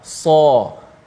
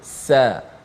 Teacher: Sad itu tebal, sin tu nipis. Sin kita sebut sebagai sa, anginnya berbunyi adapun sad so.